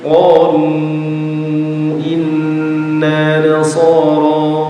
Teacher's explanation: Mad jaiz. Kalau mad jaiz harusnya dibaca 4 atau 5 harokat.